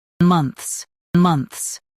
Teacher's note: Stress mun and keep ths soft.